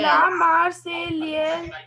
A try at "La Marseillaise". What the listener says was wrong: No, L will be silent, beta. La Marseillaise. La Marseillaise.